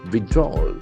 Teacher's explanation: That last L is almost silent.